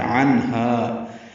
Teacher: عنہا عین وسط حلق سے ادا کرتے ہوئے نون سے ملانا ہے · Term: اظہار حلقی